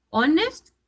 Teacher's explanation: it is an honest man because in this word your h is silent